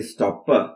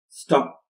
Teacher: in this context the final position we don't release it is unreleased it is stopped we don't say stop / but stop so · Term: unreleased plosive form